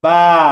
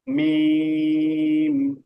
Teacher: আর মিমটা হলো দুই ঠোঁটের শুকনো অংশ থেকে এটা মনে রাখবেন বা ভিজা ঠোঁট মিম শুকনো ঠোঁট